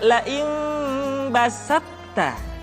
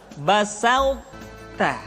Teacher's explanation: Sifat to, sifat itbaq yang dimiliki oleh huruf to masih tetap ada. Sehingga ketika mengucapkan to bertemu dengan ta, terdengar suara yang menebal